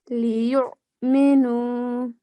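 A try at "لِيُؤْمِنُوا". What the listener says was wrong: Okay, so make it a little bit softer when you're joining. Make sure so it doesn't have that sound that comes from the middle of the throat. Liyu'minu.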